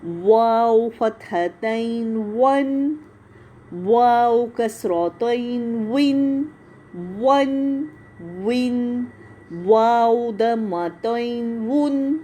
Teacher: واو بھی ہونٹوں سے ادا ہوتا ہے